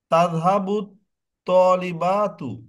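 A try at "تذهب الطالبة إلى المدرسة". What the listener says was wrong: তলিবাতুর বাতে টান হবে না আরেকটু দ্রুত বলতে হবে না না ওই বাতে টান হয়ে যাচ্ছে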